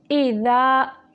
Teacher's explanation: हमज़ा को झटके से, दाल को नरम तरीके से